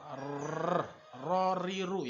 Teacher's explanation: Huruf ra, tikrar, ro, riru ya, bergetar seperti itu.